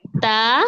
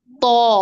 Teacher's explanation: تا باریک ہے، تو موٹا ہے